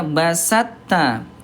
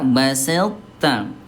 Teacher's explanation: Yang pertama langsung ke ta. Yang kedua memunculkan sifat tebal th dulu baru ke ta.